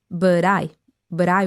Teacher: But I wanna try. And because but is followed by I, which is vowel sound, right? It also turns into a D sound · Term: flap te